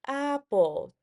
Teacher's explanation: When I say apple, my voice starts higher and then goes lower. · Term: syllable stress